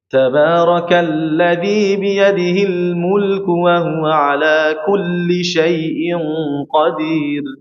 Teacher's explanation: Ini setengah mengalir pada huruf lam. Huruf lam itu rapat di sini, ya, rapat pada makhrajnya, namun dia bocor pada area sisi kanan dan kirinya. Ini membuat huruf lam itu harus dibaca dengan sedikit mengalir.